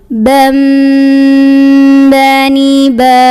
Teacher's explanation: Jadi pas bagian tanwin ketemu ba, bunyi tanwinnya bukan an lagi ya, bukan ban tapi bam, sambil tahan dulu. Bam bani ba. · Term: iqlab